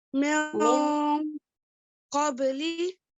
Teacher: for Ikhfa, we are hiding the sound of N, the Nun Sakin sound. We're hiding it.